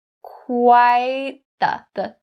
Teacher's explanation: I stop that T sound in quite and I start saying the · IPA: / kwaɪt ðə /